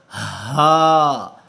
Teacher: یہ جو ہا ہے گول ہا ہے، یہ جو ہمارا انر تھروٹ ہے، گلے کا تیسرا حصہ جو ہمارا سینے کی طرف ہے، یہ قدرے بھاری آواز جو ہے ہا کی وہاں سے پروڈیوس ہوگی، قدرے بھاری آواز، اس پر زور بھی زیادہ لگے گا.